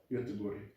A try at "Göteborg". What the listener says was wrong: I mean, your accent puts a lot of emphasis on the wrong places, but it works. Göteborg.